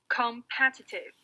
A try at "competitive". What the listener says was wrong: Right, very good.